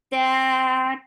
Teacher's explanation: two counts long and very sharp sound. There is no flow of breath.